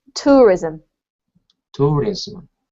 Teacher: we have the emphasis on the first syllable